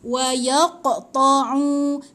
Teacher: Qaf bila mati ada pantulkan sikit.